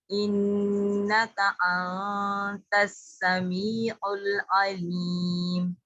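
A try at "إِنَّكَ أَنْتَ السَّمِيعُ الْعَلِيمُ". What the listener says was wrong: लाम नहीं हिलाना, लाम को पकड़ के रखें।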